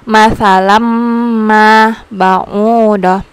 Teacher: langsung masukkan bunyinya ke huruf mim. Masalam ma ba'udah sambil didengungkan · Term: idgham biguna